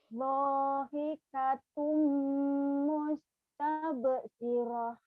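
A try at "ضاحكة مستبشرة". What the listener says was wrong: Dahikatum mustabshirah. Shinnya gede di ujungnya ya.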